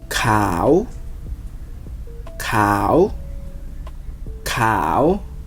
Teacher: if you turn it into a question, the English way, you push that word up at the end.